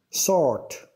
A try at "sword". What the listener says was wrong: Yeah, I'd say he didn't pronounce the W, so he pronounced it as a sword. But the ending was wrong, right?